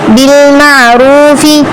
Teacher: بالمعروف را پر تفخیم کرنی ہے اور واو کے پیچھے پیش آ رہا ہے تو تھوڑا سا کھینچ کر پڑھنا ہے